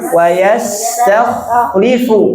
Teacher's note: Tebalkan khonya, jangan yang dikurangi sifatnya, karakternya.